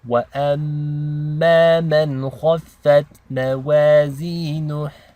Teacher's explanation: And kha is a heavy letter. Okay, so this is nice and thick.